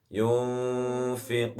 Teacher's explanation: Dibaca samar antara idhar dan idgham bi gunnah, artinya antara jelas dan mendengung. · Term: ikhfa